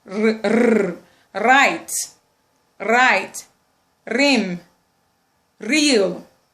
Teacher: We also have the alveolar approximant sound, which is r, r, right, right, rim, real, and so on and so forth.